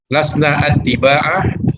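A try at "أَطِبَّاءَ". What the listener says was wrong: Mohon maaf, yang tasdid itu huruf ba. Atiba'a.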